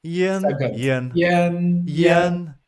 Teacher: So one is like flat. Keep it high pitch and flat for yen, second.